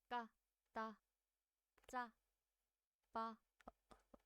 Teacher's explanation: And these are pronounced with greater force. These are tense consonants.